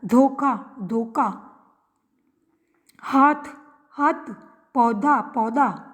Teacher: इसमें हिंदी की महाप्राण ध्वनि के स्थान पर अंत में प्रायः अल्प प्राण ध्वनियों का प्रयोग होता है, जैसे भूख, तो ख महाप्राण है तो इसकी जगह भूख, क अल्प प्राण, धोखा, धोखा, हाथ, हाथ, पौधा, पौधा आदि।